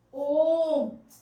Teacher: जैसे हम ओम लिखते हैं, इनका उच्चारण में समय ज्यादा लगता है, 3 गुना समय लगता है। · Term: प्लुत स्वर